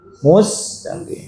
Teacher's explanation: Adapun huruf sin kata Imam Jazari hati-hati jangan ditebalkan